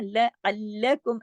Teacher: عین کو حلق سے پڑھیے، تشدید ہے جوڑ کے پڑھیے سختی سے